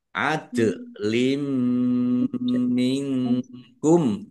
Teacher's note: dal sukun bacaan qalqalah Dibaca memantul, ditampakkan pantulannya. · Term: kolkolah